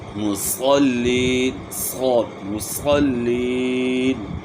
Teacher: صاد کو آپ نے موٹا کرنا ہے، سین کو آپ موٹا کریں گے تو صاد بن جاتا ہے، لیکن ہونٹ جو ہے نا آپ نے گول نہیں کرنا. جس طرح عام طور پہ معاشرے کے اندر لوگ پڑھتے ہیں صاد میں ہونٹ گول کرتے ہیں، اور اس طرح قا کے اندر بھی جو ہے نا ہونٹ گول کر لیتے ہیں، تو یہ غلطی ہے.